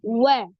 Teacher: huruf wau pada saat berharakat Apun dia dimajukan kedua bibirnya